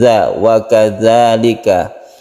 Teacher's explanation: Wakadzalika, kemudian zal ini makhrajnya ujung lidah dengan ujung gigi bagian atas